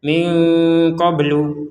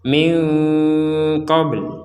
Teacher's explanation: Jadi dikurangi atau tidak terbaca lagi dhammahnya. Tapi huruf lamnya wajib kita ucapkan. Walaupun tidak ada harokatnya. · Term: wakof